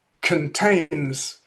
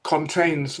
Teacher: Um this is a something which varies from accent to accent. In the south of England, it would normally be a schwa, contains, whereas up north, people often make this with a fully rounded aw